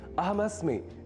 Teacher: अस्मि बोलने के क्रम में मैंने अस्मि के ई इस ह्रस्व अक्षर का विशेष रूप से अर्थात लघुता के साथ उच्चारण किया है